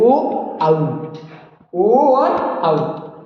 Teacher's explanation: कंठोष्ठ, कंठ और होंठ की सहायता से बोले जाते हैं।